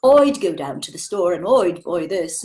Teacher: So instead of saying I, they don't say I. Instead of I, they say oi. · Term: Cockney accent